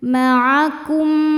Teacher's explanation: Cara bacanya mim pertama dimasukkan ke mim kedua disertai dengung. Jadi bunyinya m yang kita tahan. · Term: idgham mimi